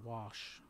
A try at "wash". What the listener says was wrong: There's no R in wash.